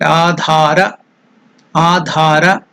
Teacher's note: Dha is Mahaprana, Dha, and elongated.